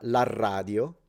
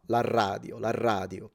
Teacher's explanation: a very strong R at the beginning of words is typical of a Sicilian accent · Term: stronger R